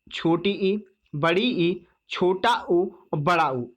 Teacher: संवृत कहते हैं जिन स्वरों के उच्चारण में मुख द्वार लगभग बंद रहता है। लगभग बंद रहता है, पूरा बंद नहीं होता है दोस्तों, लगभग बंद रहता है।